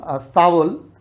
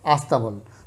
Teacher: তাহলে এই স্টেশনকে যখন স্টেশন বলছে বা স্কুলকে যখন স্কুল বলছে, অথবা একটা ইংরেজি শব্দ স্ট্যাবল, স্ট্যাবল থেকে বাংলায় একটা শব্দ আসে সেটা হচ্ছে স্তাবল। এই স্তাবল এটার আগে আবার একটা আ যোগ করে আমরা বলি হচ্ছে আস্তাবল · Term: আদি স্বরাগম